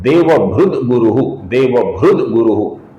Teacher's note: गुरु का ग आने के बाद अर्थात क ख ग घ म का ग, ये तीसरा अक्षर त के आगे आने के बाद त थ द ध न, इस पंक्ति का जो तीसरा अक्षर है द, ये त की जगह पर आ जाता है, इसलिए त का बन जाता है द, अपूर्ण त का बन जाता है अपूर्ण द, जो कि आगे वाले गुरु के ग को जुड़ जाता है।